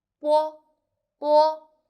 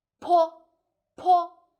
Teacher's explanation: if you put your hands before your mouth, you will feel like bo, bo, normal, and po, po, strong air flow out.